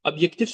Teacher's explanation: obyektiv sözündə vurğu sonuncu hecaya